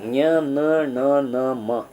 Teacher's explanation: ಮೂಗಿನ ಮೂಲಕ ಉಚ್ಚರಿಸಲ್ಪಡುವುದರಿಂದ ಇವಕ್ಕೆ ನಾಸಿಕ್ಯ ವ್ಯಂಜನ ಅಂತ ಕರೀತೇವೆ